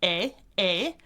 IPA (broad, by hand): eɪ